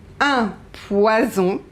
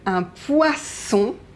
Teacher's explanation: un poison, you have S and you have two vowels, so we pronounce it Z. And un poisson, you have double S, so even if you have two vowels, this is the sound S.